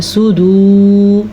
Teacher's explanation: صدورہم میں صاد کو پر پڑھنا ہے، جبکہ واو مدہ کی وجہ سے یہاں پہ اس لفظ کو کھینچ کے پڑھنا ہے